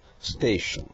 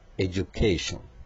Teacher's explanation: ションの前にアクセント